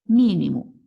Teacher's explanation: Mínimo, a sílaba mais forte é o mi. Então, não é a última, não é a penúltima, é a antepenúltima.